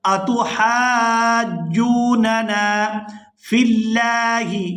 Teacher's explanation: لفظ اللہ کے لام کو باریک ادا کریں گے کیونکہ اس سے پہلے زیر ہے